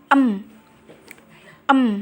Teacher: nasional ini vellum atau langit-langit lunak diturunkan menghalangi rongga mulut udara hanya bisa keluar melalui hidung